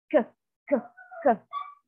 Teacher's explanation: the back of your tongue is against the soft palate or the vellum, okay? So if you can notice, if you try to produce sounds like k, k, k, it's the back of your tongue touching the soft palate, right? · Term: velar, velars